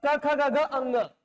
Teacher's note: क वर्ग का मतलब क ख ग घ अंग का उच्चारण हो रहा है कहां से? कंठ से।